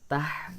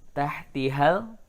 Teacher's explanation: Hati-hati, ini ada di tenggorokan, ya. Huruf H ada di tengah tenggorokan dan dia bersih lurus, ya, tidak tertahan. Tah mengalir.